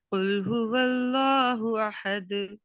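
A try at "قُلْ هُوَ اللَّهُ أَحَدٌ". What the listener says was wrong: ٹھیک ہے، اس ہو کو زیادہ اسٹریچ نہیں کرنا، یہ حروف مدہ کی طرح ہی جتنا ایک الف کے برابر اس کو لمبا کھینچا جائے گا.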